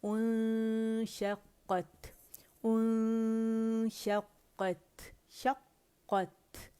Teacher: क़ाफ मोटा, कत नहीं बोलेंगे, ठीक है, क़ौ है क़त, और ता का हमस वाज़े करेंगे